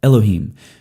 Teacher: And so El becomes Elohim. You shorten what's up front so that you can throw that accent on the end.